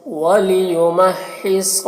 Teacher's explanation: ہا کو حلق سے ادا کریں گے اور ہا میں تشدید ہے تو اسے ڈبل پڑھا جائے گا، اور صاد کو پر پڑھیں گے۔